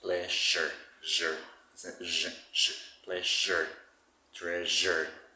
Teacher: you say sh but instead of that you say like a little vibration · So it's a kind of sh with vibration.